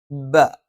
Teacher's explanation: രണ്ട് ചുണ്ടും അടച്ചു വെക്കും, പക്ഷേ മേലെ ചുണ്ട് അല്പം പുറത്തേക്കും താഴെ ചുണ്ട് അല്പം ഉള്ളിലേക്കും ചേർത്ത് വെക്കും.